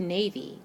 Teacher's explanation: about where I hear the accented syllable in the word Navy I hear the long a at the end of the first syllable so I know this is an open a vowel pattern since · Since I hear the long A in the first syllable, I know that the first syllable is the accented syllable.